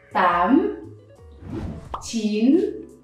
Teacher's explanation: Again, up tone, lower your voice and raise it.